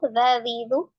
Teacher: ujung lidah ada di ujung gigi seri bagian atas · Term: dalal